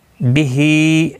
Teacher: ہا کے نیچے کھڑی زیر ہے، ایک الف کی مقدار کے برابر کھینچ کر پڑھا جائے گا. اللہ کا لام اس زبر کی وجہ سے موٹا پڑھا جائے گا، پر پڑھا جائے گا.